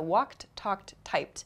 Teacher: you can hear the e d sound at the end of each verb it's spelled e d but the pronunciation is a t sound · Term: t ending sound